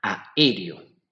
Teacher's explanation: es la separación de dos vocales abiertas en sílabas distintas